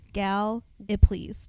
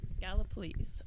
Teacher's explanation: Emphasis on the first syllable.